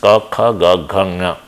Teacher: when you try to constrain the air, exhalation of air at a velum, and sudden release of that will produce these 5 consonants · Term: velar consonants